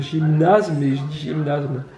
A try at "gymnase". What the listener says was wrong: C'est gymnase. c'est pas zme.